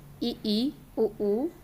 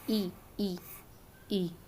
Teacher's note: संवृत स्वर के उच्चारण में मुख द्वार संकरा हो जाता है